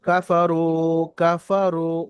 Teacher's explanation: কাফারু, কাফারু, ওয়াও সাকিন ডান দিকে পেশ, ওয়াও সাকিন ডান দিকে পেশ, ওয়াও মাদ্দা, রয়ের উপরে পেশ আছে, ওয়াও সাকিন ডান দিকে পেশ, ওয়াও মাদ্দা এক আলিফ পরিমাণ টান দিয়ে পড়তে হবে।